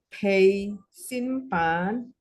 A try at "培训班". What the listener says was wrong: Oh, nadanya ya. Pei 2. Peishun 4, baru pan ada 1. Oh, pan. Peishun pan. Pan. Pan. Nah, Ibu pei-nya tadi yang pertama benar. Dia pakai H. Jadi peishun pan. Oh, pan. Ya, kalau mau patokan tuh lurus, jadi pakai tangan ya. Lurus dari bahu sini ke sini. Pan. Jadi dia nggak naik gitu ya.